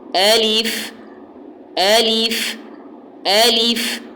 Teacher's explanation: حمزہ کا زبر، اس کی آواز اوپر جائے، لام کے زیر کی آواز نیچے کی طرف دبے، اور فا ساکن ہے تو فا کا جو ساؤنڈ ہے وہ واضح ہو۔ یہ جو آواز ہے فا کی، یہ بھی واضح ہونی چاہیے۔